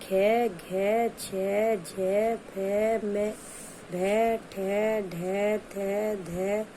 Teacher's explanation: प्रत्येक वर्ग का दूसरा और चौथा महाप्राण व्यंजन है इनके उच्चारण में अधिक हवा की आवश्यकता होती है